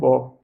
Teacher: तो व क्या है? दंतोष्ठ, दांत से भी बोला जाता है और होंठ से भी बोला जाता है